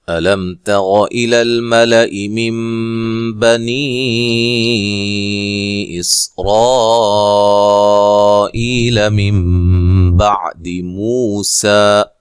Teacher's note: علم حمزہ کو تحقیق سے پڑھنا ہے، لام کو موٹا نہیں کرنا، میم ساکن کا اظہار ہے، غنہ نہیں کریں گے · تا کو باریک پڑھیں گے